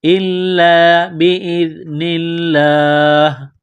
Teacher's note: باذن اللہ، زال کو پڑھتے وقت زبان تھوڑی سی باہر نکالیں گے، زال کو نرم کریں گے. لفظ اللہ کے نام سے پہلے زیر ہے تو لفظ اللہ کے نام کو باریک کرنا ہے